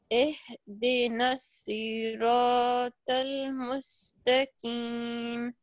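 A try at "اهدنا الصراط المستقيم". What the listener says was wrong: Okay, we can't say mustaqi, ki wrong. It's a qi. There is a difference between qi and ki.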